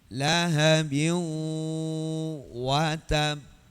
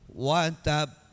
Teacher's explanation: qalqalah yang disertai dengan tasdid atau syiddah. Jadi ditahan 2 harakat baru dipantulkan. Dipantulkan, bukan dibunyikan. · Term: qalqalah kubro